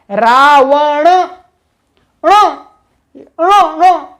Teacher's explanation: मूर्धा अर्थात इनके उच्चारण में जिह्वा का अग्र भाग मूर्धा में हल्का सा स्पर्श होना चाहिए